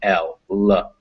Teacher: This tells us that the tongue is near the gums. Because it's lateral, it comes out the side of your mouth instead of the front. And approximate means you're not really being very obstructive with the airflow.